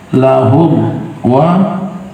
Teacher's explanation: izhar syafawi, mim sukun berjumpa dengan waw